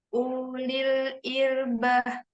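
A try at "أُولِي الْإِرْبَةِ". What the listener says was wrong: Jangan dipanjangkan u-nya. Ulil. Kenapa nggak dipanjangkan tadi? Karena ada sifrul mustadir, benar. La yuntak. mustadir la yuntak.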